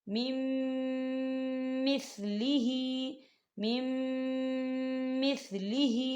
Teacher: یہاں غنہ ہوگا اور غنے کی مقدار جو ہے 2 سے 3 سیکنڈ ہوگی، اس سے زیادہ نہیں ہوگی. · نون ساکن کو جو ہے اگلے میم کے اندر مدغم کریں گے